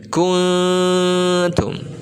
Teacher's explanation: Nah, ikhfa ini adalah setiap nun mati atau tanwin yang bertemu dengan huruf-huruf ikhfa, maka dibacanya itu harus antara izhar, idgham, dan disertai gunnah